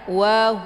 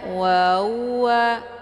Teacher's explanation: mesti ditekan dia Wua satu-satu sempurnakan haknya wau keluarnya dua bibir ha keluarnya dari tenggorokan kemudian wau juga dua bibir maka posisikan pada tempatnya Wua ini ditekan wau ini iringan Hnya